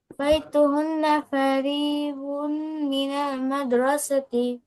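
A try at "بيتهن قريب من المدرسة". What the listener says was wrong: এটা ফারি না, এটা করিবুন। করিবুম মিনাল মাদ্রাসাতি। বাইতুহুন্না করিবুম মিনাল মাদ্রাসাতি।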